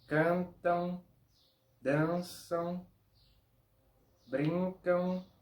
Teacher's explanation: como si fuese sonido de AN más un sonido de U, pero todo junto, en un único sonido. No es AN, U, pero todo junto en un único sonido AN. · el sonido no es de AM, sonido de AN. Es un sonido de AN.